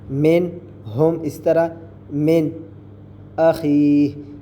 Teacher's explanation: اب یہ دیکھیں نون ساکن ہے، اس کے بعد ہا، ہا حروف حلقی میں سے تو ہم یہاں غنہ نہیں کریں گے، بغیر غننے کے نون کی آواز کو ظاہر کر کے پڑھیں گے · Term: اظہار